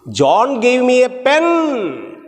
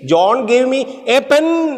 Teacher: Pen is stressed. It means nothing else. No other thing but pen.